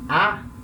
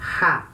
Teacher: essa vogal com espírito forte vai ter uma aspiração, quer dizer, o som dela vai ter um pequeno ar vindo da garganta.